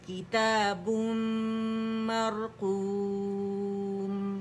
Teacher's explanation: مشدد میم ہے تو یہاں اکمل گریڈ کا غنہ کریں گے